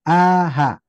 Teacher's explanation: Pertama, huruf yang keluar dari tenggorokan bawah, hamzah dengan H.